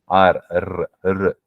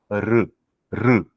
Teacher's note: retroflex sound at the front roof of the mouth